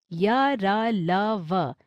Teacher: अंतहस्थ व्यंजनों का उच्चारण करते समय मुख का कोई अंग दूसरे अंग का पूरी तरह स्पर्श नहीं करता, अर्थात इनका उच्चारण स्वरों और व्यंजनों के बीच की स्थिति में होता है, इसलिए इन्हें अंतहस्थ व्यंजन कहते हैं।